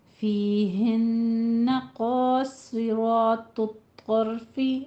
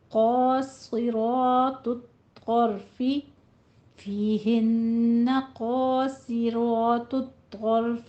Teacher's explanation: قاصرہ میں قوف کو پر پڑھنا ہے، صاد کو پر پڑھنا ہے، را کو پر پڑھنا ہے۔ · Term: حروف مستعلیہ